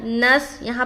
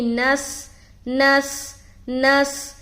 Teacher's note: یہاں پر سین میں سیٹی کی آواز ظاہر ہوگی